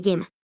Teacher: la letra y representa también el fonema palatal sonoro de yema